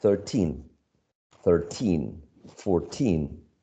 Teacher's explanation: think about the numbers ending in teen, like for example 13, 14, 15, 16, right? The stress goes on the last syllable